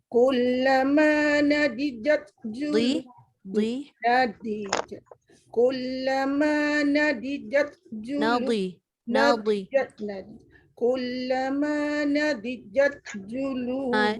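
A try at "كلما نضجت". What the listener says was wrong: Dia yang tebal bukan jim, dia jangan nadijat. Dia terbalik nadijat.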